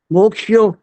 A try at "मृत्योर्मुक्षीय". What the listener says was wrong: हाँ, मोक्षी ये जो बोला ये गलत है, मोक्षी नहीं होता ये। म में ओ की मात्रा नहीं है, ये गलत बोल रहे हो ना। बताओ कौन सी मात्रा होती है, बताओ, पता है? म में कौन सी मात्रा होती है?